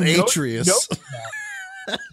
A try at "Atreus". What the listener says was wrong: Like, you're putting the stress on the wrong syllable.